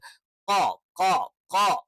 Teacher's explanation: ക എന്ന് പറയുന്നതിന്റെ കുറച്ചുകൂടി ബാക്ക് സൈഡിൽ നിന്ന്. അപ്പൊ നാവിന്റെ ആരംഭം അഥവാ നാവിന്റെ മുരട് എന്ന് നമുക്ക് പറയാം.